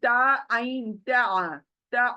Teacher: ऐन की आवाज हलक में आनी चाहिए।